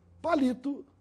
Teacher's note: A palavra palito tem a sílaba mais forte na penúltima sílaba, no li. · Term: paroxítona